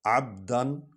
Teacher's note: عین حرف حلقی ہے، حلق سے ادا ہوگا. با حرف شفوی ہے، یہ ہونٹوں سے ادا ہوگا.